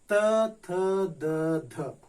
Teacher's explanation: दांतों से उच्चरित जो ध्वनियां हैं उन्हें त वर्ग के अंतर्गत रखा गया है